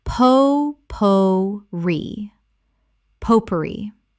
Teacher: 3 syllables with the stress on the final syllable, from French.